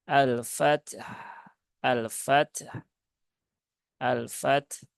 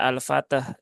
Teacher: tunaikan dulu syidah kemudian Hames dari ta setelah itu tunaikan rakhawah dari huruf ha